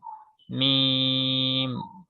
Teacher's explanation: উচ্চারণ শুরুতে দুই ঠোঁট কি থাকে মিশানো থাকে বা লাগানো থাকে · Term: মিম হরফটার